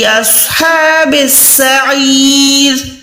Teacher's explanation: ہا کو حلق کے درمیان سے ادا کریں